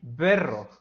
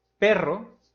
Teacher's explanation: diferencia entre una bilabial sonora y sorda